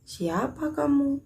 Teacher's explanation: kalimat yang diakhiri tanda tanya dan intonasi suaranya menurun